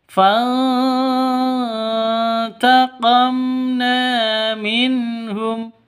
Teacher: Nun mati bertemu dengan ta. Cara bacanya disamarkan didengungkan. · Cara bacanya disamarkan, didengungkan, samar didengungkan, siap-siap ke huruf ta-nya, ya. Samar didengungkan, siap-siap ke huruf ta-nya karena ikhfa hakiki.